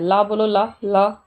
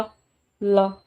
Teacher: ला जब बोलते हो तो जीवा के दोनों साइड से हवा से निकल रही है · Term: पार्श्विक व्यंजन